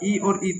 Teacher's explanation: ई और ई तालु से बोले जाएंगे